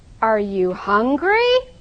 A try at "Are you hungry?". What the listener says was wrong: It's not going up enough.